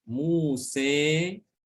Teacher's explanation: Itu benar-benar dia pengucapannya itu antara alif dengan ya, 50-50 ya, tengah-tengah. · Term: imalah kubro